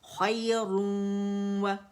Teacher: इदगाम नाक़िस बिल गुन्ना, गुन्ना feel हो रहा है